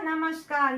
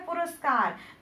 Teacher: तो इसमें का है परंतु इसमें आधा सा बन रहा है, विसर्ग का लोप हो रहा है और यहाँ पर विसर्ग के बदले आधा सा बन रहा है